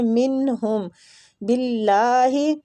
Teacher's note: اللہ کی لام کو ادھر ہم نے باریک پڑھنا ہے کسرہ کی وجہ سے